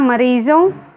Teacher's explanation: इसी तरह मरीज़ों, यह भी उर्दू का शब्द है, इसलिए ज के नीचे नुक्ता का प्रयोग किया गया है और ओ के साइड में अनुस्वार का प्रयोग है क्योंकि इसका उच्चारण करते समय केवल नाक से हवा निकलती है